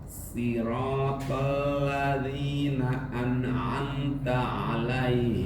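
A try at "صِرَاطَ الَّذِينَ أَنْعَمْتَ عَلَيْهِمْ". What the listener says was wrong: Masih kedengaran nunnya yang keseret Pak. An'amta. An'amta, enggak an'amta.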